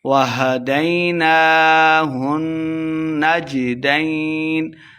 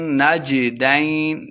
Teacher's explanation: نون کے اوپر کھڑی زبر دو حرکات لمبا کر کے پڑھیں گے اور نون مشدد ہے غنہ کرنا ہے